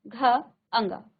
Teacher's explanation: अब आप देखिए सभी वर्णों में अ का उच्चारण आया है